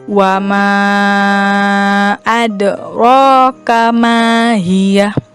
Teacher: Karena huruf dalnya itu berada di tengah dan pengucapan huruf dal itu diakhiri dengan huruf e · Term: qalqalah sugro